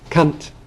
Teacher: He's got a trap sound in it for can't, but not the American a, rather the Northern English a